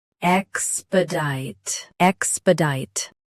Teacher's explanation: Stress -dite. Keep -sp- soft and say ex- clearly.